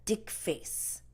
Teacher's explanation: in the Korean language the th sound does not exist so they replace the th sound usually with like a D sound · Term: Korean accent